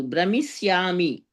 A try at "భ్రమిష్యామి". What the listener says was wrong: షకారం. భ్రమిష్యామి. అది సకారం ఉండదు ఇక్కడ. ఈ కీ ఉంటే ఇంకా సా ఉండదు అక్కడ. భ్రమిష్యామి, ఉత్తమం.